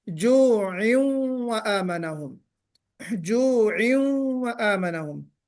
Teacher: تنوین کو ہمیں ظاہر کر کے نہیں پڑھنا بلکہ تنوین کو واو میں ملاتے ہوئے غنے کے ساتھ پڑھنا ہے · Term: ادغام ناقص